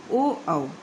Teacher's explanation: ओ औ का उच्चारण स्थान कंठोष्ठ है।